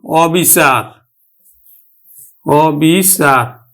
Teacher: কিন্তু ও তয় রসকারে তি শিক্ষার্থী বন্ধুরা এগুলোর কিন্তু ব্যতিক্রম আছে নেতিবাচক অর্থে আদ্য আবার বিবৃত উচ্চারণ অর্থাৎ অ এর মতই উচ্চারণ হবে